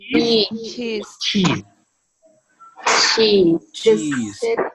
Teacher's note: It's alveopalatal, but it is affricate.